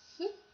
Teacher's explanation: the articulators are extremely close to each other however they do not touch so they do not form the seal instead they form a small Gap allowing the air stream to escape and in this way the characteristic hising sound sound of a · fricative is produced definitely while producing for example the sound F you might notice that the sides of the mouth touch the top teeth however in the middle be attentive the small Gap is created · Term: fricative sound